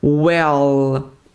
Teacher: desse L onde a língua vai lá no céu da boca